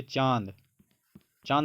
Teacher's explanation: चांद बोलते टाइम आपका आवाज नाक से भी थोड़ा निकल रहा है